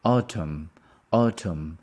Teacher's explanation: we don't pronounce the N is silence Autumn the stress is on the first one autumn when was